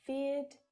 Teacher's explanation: in Australia we don't pronounce the final R consonant sound when it follows a vowel sound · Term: Australian accent